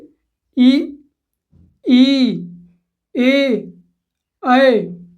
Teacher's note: जीभ के अगले हिस्से से उच्चारित किए जाते हैं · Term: अग्र स्वर